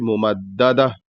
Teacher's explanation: ہے تو اس کو واضح طور سے ادا کرنا ہے، اور جب آخر میں رکیں گے تو ہا کی آواز نکلنی چاہیے، تھوڑا سا ظاہر ہونا چاہیے